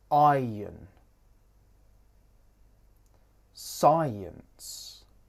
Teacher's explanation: This starts with the I diphthong and ends in the schwa.